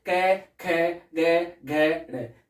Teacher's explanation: क वर्ग में जो भी पांचों वर्ण हैं उनका उच्चारण स्थान क्या है, कंठ है। जैसे क, ख, ग, घ, ड़, तो ये कहां से बोले जाएंगे, कंठ से बोले जाएंगे।